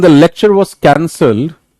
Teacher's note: high pitch on both syllables of cancelled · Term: continuation